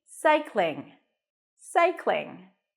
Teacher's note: together cych cling like the word cling to cling on something the end has an NG cycling so you don't have to pop the g at the end